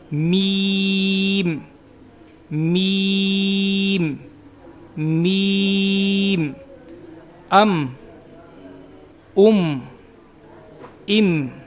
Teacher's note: मीम मी अम उम इम मीम दोनों होठ मिलेंगे उसके बाद इसको अदा किया जाएगा मीम दोनों होठ मिलाएंगे और लास्ट में जाकर वापस मिल जाएंगे जुदा होंगे फिर दोबारा मिल जाएंगे